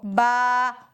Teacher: बा दोनों होठों की तरी के हिस्से से ही अदा हो रहा है · ہونٹوں کو بند کرنے کے بعد باہر سے جو حصہ نظر آتا ہے وہ دونوں ہونٹوں کا سوکھا حصہ ہوتا ہے اور جو اندر چھپ جاتا ہے وہ ہوتا ہے دونوں ہونٹوں کا گیلا حصہ۔ تو با دونوں ہونٹوں کے گیلے حصے سے مل کر ادا ہوتا ہے